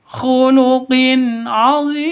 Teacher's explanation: Azim panjang ini mad arid lisukun, panjang boleh 2, boleh 4, boleh 6 ketukan atau harokat